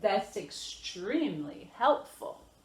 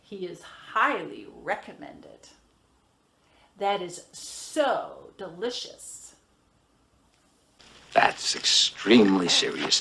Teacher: we normally start at the low tone and I have a stress on my adverb and an adjective